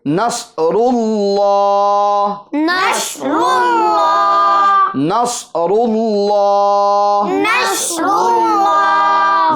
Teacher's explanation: रूल लाम खड़ा जबर ला लाम खड़ा जबर ला नसरुल्लाह नसरुल्लाह लफ्ज अल्लाह के लाम को पूर करेंगे र को भी पूर करेंगे · لفظ اللہ کے لام کو پور کریں گے، را کو بھی پور کریں گے